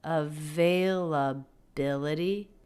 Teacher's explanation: I feel like she takes the word availability, and really stretches it out. The stressed syllable there, availability, is bill.